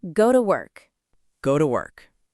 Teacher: If you say each word separately and clearly, go, to, work, it sounds a little robotic. Right, but naturally we say something more like go to work, where to becomes a very quick, relaxed sound, almost like t. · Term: weak forms